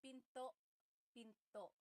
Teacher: Do you hear the glottal stop when I say pinto? Pinto. So it's not pinto.